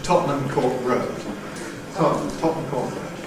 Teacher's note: Compression removes the syllabicity at the end, giving Tottenham, which is the usual fast pronunciation, Tottenham. T before N, nowadays increasingly a glottal stop, so we end up with the pronunciation Tottenham Court Road. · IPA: [ˌtɒʔnəm kɔːt ˈrəʊd]